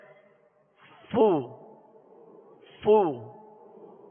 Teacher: پہلے فا کو اس کے مخرج سے ادا کریں گے، اور جب حرکت ادا کریں گے تو ہونٹوں کو گول کر لیں گے، جیسے فو، فو.